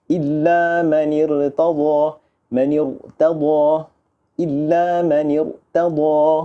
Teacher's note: Tebal huruf ra, hamzah wasal di situ kita tetap baca dengan tebal.